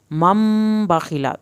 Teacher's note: چھوٹی میم کے ساتھ میم ملے گا اور میم ساکن کے بعد با ہے، ایک الف کے برابر دیر لگے گی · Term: ادغام